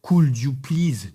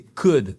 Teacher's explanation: on ne prononce pas le L